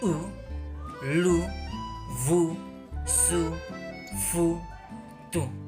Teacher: Cette voyelle est arrondie, ce qui implique que les lèvres sont arrondies et saillantes lors de la prononciation. · La voyelle U est une voyelle fermée, ce qui signifie que la langue monte vers la palais pendant la prononciation. L'arrière de la langue est relevé, tandis que la partie antérieure reste basse.